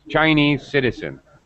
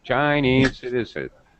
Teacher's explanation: part instead of Chinese you said Chinese Chinese high low so you go high on Chinese you move the stress Chinese citizen like that up down up down Chinese citizens it's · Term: movable stress